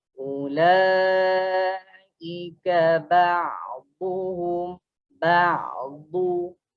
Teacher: Baris depan kena muncung and then huruf dad kena tepi lidah side lidah kita terangkat ke gigi geraham sebelah atas.